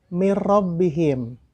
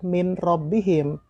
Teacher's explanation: Artinya memasukkan dengan tidak mendengung. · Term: idgham bila gunah